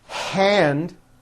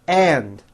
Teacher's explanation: that air sound now this may not pertain to you but many foreign speakers tend to drop that air sound when a word begins with the letter h